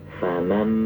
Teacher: karena nun ketemu ba itu ada isyarat atau ada tanda mim, berarti kita langsung memposisikan makhraj ba. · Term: iqlab